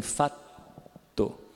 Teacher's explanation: Você segura o T, alonga ele um pouquinho. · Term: T alongado